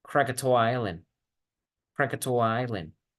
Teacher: Noten cómo Krakatoa Island, todas estas son vocales, entonces me facilita conectar esta palabra con la anterior. · La A del Krakatoa se conecta con el sonido I de isla. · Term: connected speech